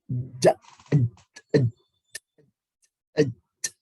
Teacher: tengah lidah ya, tengah menempel ke bagian tengah langit-langit mulut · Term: huruf jim